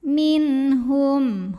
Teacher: nun sukun bertemu huruf halqi atau huruf tenggorokan yaitu H maka nun sukun dibaca jelas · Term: izhar halqi